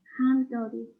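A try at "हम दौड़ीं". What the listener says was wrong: Hum, right? So there is a nasalized sound. So you have dodi and then nasalized sound. So hum dodi.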